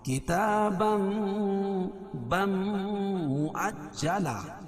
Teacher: بِإِذْنِ اللَّهِ كِتَابًا مُؤَجَّلًا، کتاب کھڑا زبر قائم مقام الف مدہ کے، اور تنوین کے بعد ادغام مع الغنہ کے 4 حرفوں میں سے میم ہے، وہ بھی دوسرے کلمے میں، تو یہاں ادغام مع الغنہ ہوگا